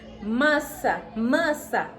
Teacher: Os dois S's fundem-se num único som. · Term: dígrafo